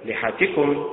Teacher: لحتكم بالنبر على حركة اللام